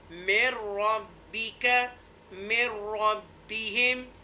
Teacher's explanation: یہاں پر نسلائزیشن نہیں کریں گے کیونکہ حروف یرملون میں سے را اور لام جب آ جائے گا نون ساکنہ کے بعد تو یہاں پر نسلائزیشن نہیں ایک اظہار کریں گے.